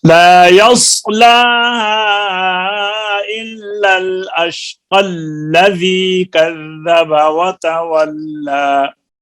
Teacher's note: پھر یا نہیں پڑھی جائے گی، قاف لام کے ساتھ ملے گا